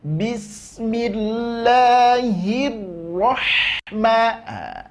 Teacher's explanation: berikan sifat inhiraf dari ro, maka dia tak akan bergetar